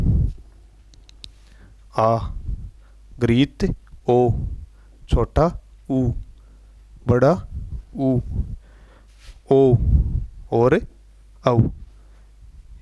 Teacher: पस स्वरों के उच्चारण में जीवा का पश्च भाग थोड़ा सा उठा रहता है। ऐसे स्वरों के उच्चारण के लिए समेत जीवा थोड़ी सी पीछे से सरक जाती है। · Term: पश्च स्वर